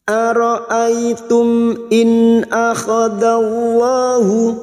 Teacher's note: mim sukun bertemu Hamzah mim sukun dibaca jelas tanpa mendengung izhar syafawi